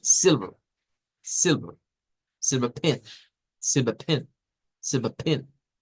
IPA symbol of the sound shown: ɪ